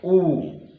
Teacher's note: जब आप बोलेंगे ऊ, ओठ दोनों आ गए, ऊ। पू मीन्स प वर्ग।